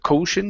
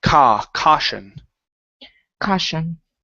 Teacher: Okay, right here instead of caution, okay, use an ah sound. So the AU is typically pronounced as an ah.